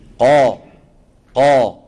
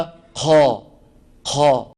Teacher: القاف العربية يا إخواني مجهورة